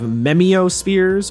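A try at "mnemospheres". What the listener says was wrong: Memospheres. Yeah, it's like mnemonic.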